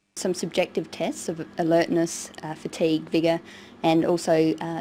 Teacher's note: she uses rising and falling tones and a tone that's neither Rising nor falling